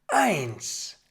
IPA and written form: aɪ̯ns (eins)